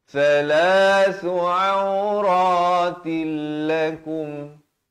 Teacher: Di sini idgham bila gunnah, asalnya ta tanwin di bawah tin, auratin, datang lam jadi auratil.